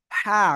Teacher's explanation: হবে হলকের মধ্যখান থেকে বা গলার মধ্যখান থেকে উচ্চারণ হবে হা গলা থেকে হালকা একটু বাতাস বের করতে হবে